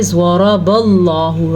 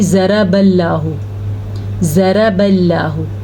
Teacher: را بھی پر ہے، لفظ اللہ بھی پر ہے. را پہ زبر ہے اس لیے را پر ہے، اور لفظ اللہ اس لیے پر ہے کیونکہ لفظ اللہ سے پہلے زبر ہے.